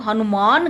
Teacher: नासिका व्यंजन के पास होने पर मौखिक स्वर अनुनासिक हो जाते हैं, इसलिए हनुमान का उच्चारण लोग हनुमान करते हैं, यानी मापे बिंदी लगा देते हैं।